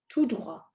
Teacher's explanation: tout droit is not followed by a vowel. You will not hear the T.